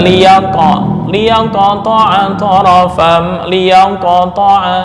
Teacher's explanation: maka cara membaca qalqalah dengan seolah-olah membaca harakat fathah itu lebih dekat